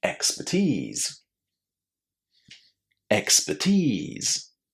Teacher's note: Which is the stressed syllable? It's the last one and it contains the long e sound. · it's going to be stressed on that last syllable, and that last syllable is going to contain a lovely long E